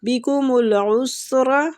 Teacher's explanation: سین باریک سیٹی کے ساتھ